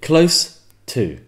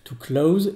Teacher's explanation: le O est plus court et Le S, c'est vraiment un S, Ça. comparé à to close, où le S, c'est limite un Z.